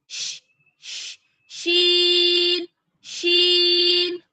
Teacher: شین کی ادائیگی میں شور کی آواز تھوڑی زیادہ ہونی چاہیے